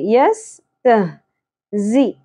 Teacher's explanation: ता बारीक होगा, ह अक्सा हलक से, यस्तहजी, ज शिद्दत और सीटी के साथ, ऊन, यहाँ पर क्या होगा, मद्दे आरिस वक्फी, यस्तहजिऊन।